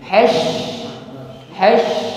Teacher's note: Ketika bersukun maka nampak sifat tafasyi. Intisyarur riha fil fami, menyebarnya angin di dalam mulut kita.